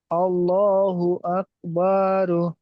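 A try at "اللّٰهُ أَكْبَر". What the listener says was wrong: আপনি বা টান দিলেন কেন?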